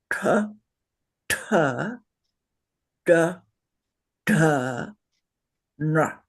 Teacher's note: tip of your tongue pointing straight up to the roof of your mouth into your brain, the cerebral position.